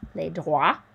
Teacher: So wa, that OI sound is like a W. We don't hear the T. We don't hear the S.